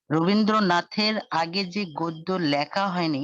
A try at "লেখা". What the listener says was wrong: আবারও লেখা বলছেন। লে, একার। আপনি বলার সময় লে বলছেন, লেখা বলছেন, লেখা হবে না। উচ্চারণটি হচ্ছে লেখা, লেখাপড়া, লেখাপড়া না। রবীন্দ্রনাথের আগে যে গদ্য লেখা হয়নি, ওটা লেখা হয়নি বলছেন আপনি।